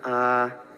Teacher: La A larga con tono bajo suena A.